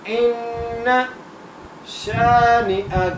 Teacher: تو یہاں سے میں سمجھا دوں آپ کو، حمزہ کو نون سے ملانا ہے، اس لیے ملانا ہے کیونکہ نون کے اوپر تشدید ہے، اس لیے ہم حمزہ کو نون سے ملائیں گے اور غنہ کرتے ہوئے پڑھیں گے